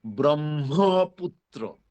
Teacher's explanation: ওই ব্রহ্মের মধ্যে হ আছে, হয়ের সাথে ম সংযুক্ত আছে, অতএব সেটার উচ্চারণ হবে ব্রহ্মপুত্র। প্রথম ম অল্প প্রাণ, পরের ম মহাপ্রাণ।